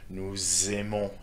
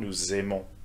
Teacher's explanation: there will be a Z sound between the last consonant of the nous, vous, il, elle forms and the start of the verb